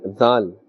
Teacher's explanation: Dhal is pronounced from the top of the tongue and the inner edge of the upper teeth.